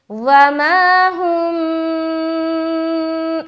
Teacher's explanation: तो यहाँ पर रुकावट भी होगी। वमा हुम, नाक से आवाज़ भी थोड़ी जाहिर होगी। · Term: इख्फाए शफवी